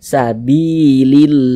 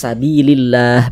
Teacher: Maka lafaz Allahnya dibaca tarkik, dibaca tipis. Jadi huruf lam yang di tengah nih, huruf lam jalalahnya ini dibaca tipis, dibaca tarkik. Sehingga dibaca sabilillah, jangan dibaca sabilillah, jangan.